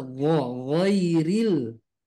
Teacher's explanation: Kalau go tipis, ya, makanya angkat pangkal lidahnya. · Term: huruf ghain